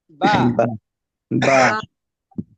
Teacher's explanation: দুই টুট ভিজা জায়গা থেকে বা হরফটা উচ্চারণ হবে দুই টুটের ভিজা জায়গা থেকে